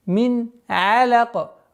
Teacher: После нун с сакином, сукуном, когда идет гортанный звук, один из 6 гортанных звуков, четкое ясное произношение нуна